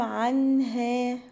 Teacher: وما هم عنها، هم الميم هنا الساكنه تبقى اظهار، عنها النون الساكنه ورا حرف الهاء هتبقى اظهار حلقي